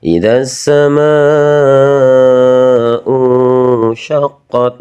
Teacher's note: Bertemu dengan hamzah dalam satu kata dinamakan ini adalah bacaan mad wajib muttasil. Wajib dibaca panjang